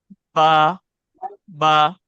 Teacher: बा अदा होगा दोनों होठों के तरी से, यानी ये जो दोनों होठ है हमारे, दोनों होठ हैं, तो ये हो गया बाहर का हिस्सा होठ के।